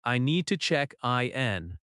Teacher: I need to check in. Stress need and in slightly. Keep small words softer. Now imagine you are looking for your gate.